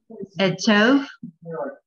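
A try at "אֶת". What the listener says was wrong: No, there's nothing after the tav. It's simple. Close? What's that last sound? T.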